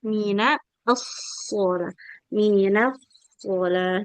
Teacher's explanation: Jadi yang tebal tetap shotnya aja. Jangan sampai nunnya terbawa tebal.